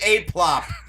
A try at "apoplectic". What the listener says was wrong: It's not apla. There's no PL. There's no fucking PL in that word. You added a letter. In the wrong spot.